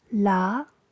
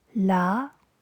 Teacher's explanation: Today we're going to look at Tone 2 in the 9 tones in Cantonese. Tone 2, rising, but ends just lower than Tone 1.